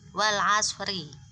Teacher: Kalau dia dibaca wasol maka rinya tetap dibaca tipis atau meringis